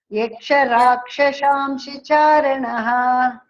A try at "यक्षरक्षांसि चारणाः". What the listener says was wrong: not rakshas rakshamsi rakshamsi charana devasargaschastavido यक्षरक्षास्मि चारणाः